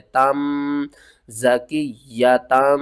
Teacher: نون کی آواز کو میم کی آواز میں بدل کر پڑھیں گے، یعنی کہ نون ختم ہو جائے گا، میم کو پڑھیں گے۔ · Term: اقلاب